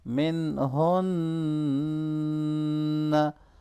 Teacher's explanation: नून साकिन पे इजहार होगा क्योंकि आगे हा रहा है और नून मुशद्दद पे गुन्ना होगा।